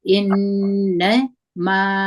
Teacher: زور د الف مده دي، د دوه حرکت کشو